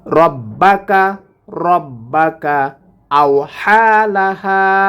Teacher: হা এক আলিফ টান হবে এখানে, হা এক আলিফ টান হবে এখানে, খারা জবর আসার জন্য এক আলিফ টেনে পড়ব, আর এখানে জবরের বাম পাশে খালি আলিফ আসার কারণে এক আলিফ টেনে পড়ব।